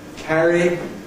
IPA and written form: ˈkæri (carry)